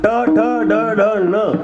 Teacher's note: ट ठ ड ढ ण याला तालव्य म्हणतात, कारण प्रत्येक शब्द उच्चारताना जीभ टाळूला आदळते. ट ठ ड ढ ण म्हणजे आपल्या इंद्रियाच्या विशिष्ट स्थानी त्याचा स्पर्श होतो.